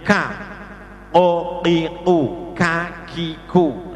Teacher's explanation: untuk kaf, pangkal lidah yang agak ke depan. Jadi ke depan sedikit, yang nempel berarti bagian yang ke depan sedikit itu ditempelkan langit-langit.